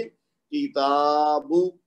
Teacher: काफ को भी एक हरकत देंगे, बा को भी एक हरकत देंगे, लेकिन बीच में जो ता है उसके ऊपर जो खड़ा जबर है वो बदल है अलिफ मद्दा का, लिहाजा उसको दो हरकत तक खींचेंगे